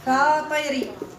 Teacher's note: فطري هذه الراء ترقق لماذا لان مسبوقه بكسر اللازم الطاء مكسوره مني كيكون الكسر حرف الاستع قبل الراء ترقق الرا نعم وقر